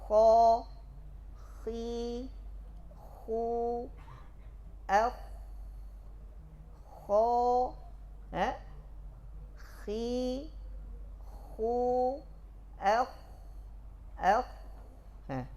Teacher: Mengalir suara dan nafas pada kha.